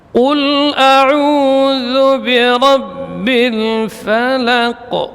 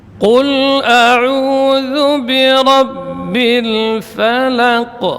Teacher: Fala, lamnya tipis yang tebal huruf qafnya.